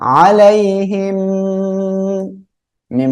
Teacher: মিম সাকিনের পরে মিম সাকিনে ইদেগামে শাফাবি এর অক্ষর মিম আসছে গুন্নার সাথে মিলিয়ে পড়বো